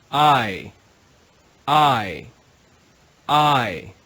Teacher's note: because they're a diphthong we read them quickly together as one sound